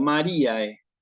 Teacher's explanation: hay un diptongo AE y también lo voy a pronunciar tal cual como aparece escrito